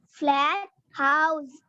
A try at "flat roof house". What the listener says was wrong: Flat roof house. Roof is important.